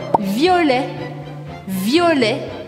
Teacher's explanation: Mais uma vez, eu não pronuncio o T no final desta palavra.